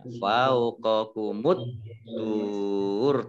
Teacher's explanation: alif lamnya alif lam samsiyah tidak dibaca, langsung masuk ke huruf berikutnya yaitu ta, ditandai dengan ada tasdidnya. Fauqakumut tur, ta-nya dibaca double.